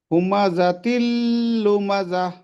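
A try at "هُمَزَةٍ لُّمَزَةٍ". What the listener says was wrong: হুমাজা তিল বলে গুণ্য হবে যে এখানে? হবে না। হুমাজা তিল লু মাজা, কোনো জায়গায় গুণ্য হবে না, টান হবে না কোনো জায়গায়। হুমাজা তিল, তিল, তিল, লুমাজা।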